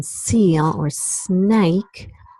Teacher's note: um that is a voiceless alveolar fricative so you feel so I take the tip of my tongue and I press it up against the alveolar Ridge and then the air comes out it's not impeded but it comes out with a lot of hissing noise